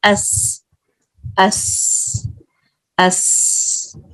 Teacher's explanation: کس طرح سے اس میں سے لائٹ وسل آتی ہے